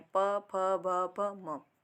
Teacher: हमारी जो दोनों होंठ हैं, ठीक है, वे आपस में मिल जाती हैं, एक दूसरे को स्पर्श करती हैं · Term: औष्ठव्य व्यंजन